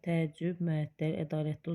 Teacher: Təəccüb, məəttəl, ədalətdə uzanma var, amma tapşırıq sözündə uzanma yoxdur.